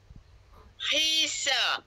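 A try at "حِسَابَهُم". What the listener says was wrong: jangan baca hisab hisabahum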